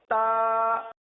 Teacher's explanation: ता यानी हल्की सी चिपकती हुई जब जबान लगेगी ना तो शिद्दत इस तरह देंगे कि थोड़ी सी गोया कि जबान चिपक रही हो अगर फौरन आ जाएगी ता ता वो शिद्दत अदा नहीं होगी